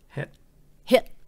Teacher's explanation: You got to stop it before the T comes out. Mình skip cái T luôn.